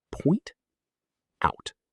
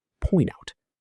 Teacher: The consonant sound at the end links right into the vowel of the preposition. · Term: linked sound blocks